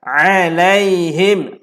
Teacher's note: Tutup mulut. Alaihim. Him rapat bibir lah.